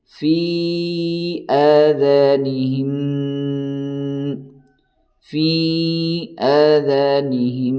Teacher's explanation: یہاں ہے میم ساکن کے بعد میم آیا ہے تو ادغامی شفوی ہوگا، یعنی آپ تھوڑی دیر ناک میں آواز کو روک کر کے پڑھیں